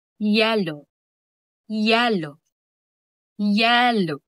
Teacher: Halimbawa sa Y, gitnang bahagi ng dila ay tumataas, gaya ng salitang yellow, yellow, yellow.